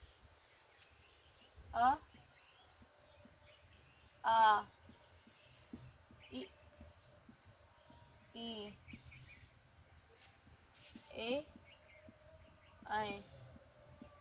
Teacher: अव्रतमुखी वो होते हैं जिनमें ओठ गोल नहीं होते। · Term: अव्रतमुखी स्वर